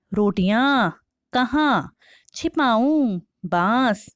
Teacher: इन शब्दों का उच्चारण नाक और मुंह दोनों से किया जाता है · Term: अनुनासिक